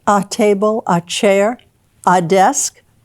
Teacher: also say ah like a table a chair a desk that's called the schwa the unaccented a